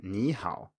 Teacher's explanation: In isolation, such as when your teacher taught you this word in the first place, they probably said ni with a dipping tone, ni. But when it's in front of another third tone, i.e. another dipping tone, it turns into a rising tone